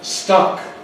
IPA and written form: stʌk (stuck)